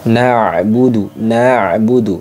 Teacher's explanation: huruf Ain itu masuk kategorinya wastul halqi ini makhrajnya di wastul halqi